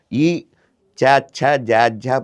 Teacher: పలికేటప్పుడు నాలుక వచ్చి ముందు పళ్ళకు తగులుతుంది